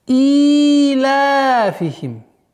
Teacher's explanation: Сыля сугра, удлинение в размере двух огласовок.